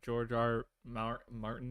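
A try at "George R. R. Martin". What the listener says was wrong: Two R's. George R. R. Martin.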